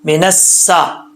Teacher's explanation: جب نون کو سین سے ملائیں گے تو بیچ میں جو الف اور لام ہے یہ گر جائے گا